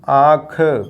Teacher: मुख तथा नाक से चंद्रबिंदु या अनुनासिक को बोला जाता है